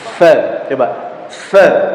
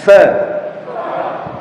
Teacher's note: Huruf fa tempat keluarnya ujung gigi seri atas ditemukan dengan perut bibir bawah